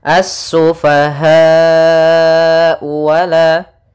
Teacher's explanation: asufahau wala kemudian padafal ha Di sini ada mad wajib muttasil mad wajib muttasil itu kita panjangkan sepanjang empat harakat